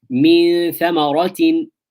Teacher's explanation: The noon is hidden. It's not clear. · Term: ikhfa